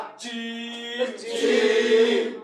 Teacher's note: জিহ্বার মধ্যখান। তার বরাবর উপরে তালুর সঙ্গে লাগাইয়া। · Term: 6 নাম্বার মাখরাজ